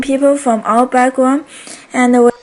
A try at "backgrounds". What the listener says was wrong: don't forget backgrounds. You don't forget that S ending at the end, and it sounds like a Z because it comes after a voiced consonant.